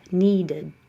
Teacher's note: Make some space and add an extra ud.